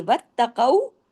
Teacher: واتقوا میں تا کو سختی سے جوڑیے، قاف کو ہیوی کیجیے